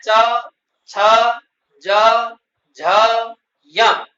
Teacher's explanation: इनका उच्चारण तालु से होता है। इसलिए इनको तालव्य वर्ण कहते हैं।